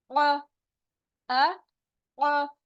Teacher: आ, बिल्कुल छोटी सी साउंड होगी आ। फिर आइन की आवाज हलक से निकलेगी, middle part of the throat